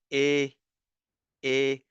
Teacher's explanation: If you focus on the shape of my lips again. So a is a little bit flatter.